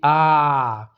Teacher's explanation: विवृत्त स्वर में क्या होता है कि इसके उच्चार मुख जो आपकी मुंह है पूरी की पूरी खुल जाएगी। आ बोलकर देखिए आ तो पूरी खुल रही है। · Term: विवृत स्वर